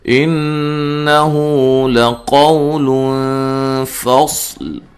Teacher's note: نون مشدد پہ غنہ غروری ہے